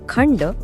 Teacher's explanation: खंड या शब्दात अनुस्वारानंतर ड हे अक्षर आलय. ड हे ट वर्गातलं असल्यामुळे अनुस्वाराचा उच्चार न असा होतो